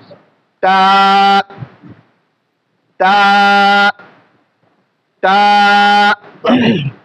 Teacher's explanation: জিহ্বার আগাটা উপরে 2 দাঁতের গোড়াতে লেগে দেব।